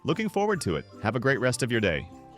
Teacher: Upbeat smiling tone. You can hear the smile.